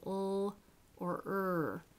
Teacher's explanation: lateral and rhodic sounds the old and the er so uh some obstruction in the oral tract but the air flows freely there's no turbulence when you say ul or er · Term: liquids